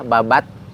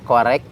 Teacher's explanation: huruf kaf sama ta itu dia sama-sama awalnya siddah ditahan dulu. Kayak T ya, babat, tapi ada hamesnya.